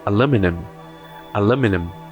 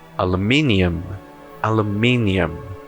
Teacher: lu é a sílaba mais forte no inglês americano e o me é a sílaba mais forte no inglês britânico